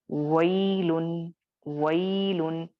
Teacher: جب و ادا کرو گے تو آپ ہونٹوں کو پہلے گول کرو گے، اس کے بعد وئی یا پہ ہونٹ تھوڑا پھیلائیں گے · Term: حروف لین